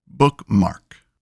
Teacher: in spondee, both syllables are stressed.